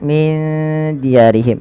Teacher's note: ikhfa lagi samarkan nunnya kepada dal